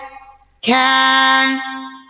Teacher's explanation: Huruf kaf dia hams. Ya, syiddah. Hamsnya itu kita bunyikan ketika selesai syiddah. Biasanya hams itu keluar bersamaan.